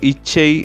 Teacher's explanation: இச்சை என்கின்ற போது அங்கு இரட்டித்து ஒலிப்பதை நாங்கள் பார்க்கக் கூடியதாக இருக்கின்றது